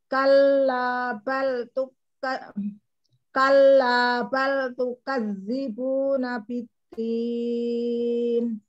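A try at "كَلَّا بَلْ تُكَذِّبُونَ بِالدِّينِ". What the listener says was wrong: Kafnya mau ditipiskan. Kalla bal tukadzibuna biddin. Jangan diputus di balnya. Kalla bal tukadzibuna biddin. Tukadzibuna biddin. Kalla bal tukadzibuna biddin. Sama huruf yang bertasydid.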